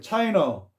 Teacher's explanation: 그 다음에 China, 우리가 차이나라고 우리가 많이 하는데 이 끝이 아가 억양이 없이 그냥 약화가 되면 차이너 발음이 난다는 거죠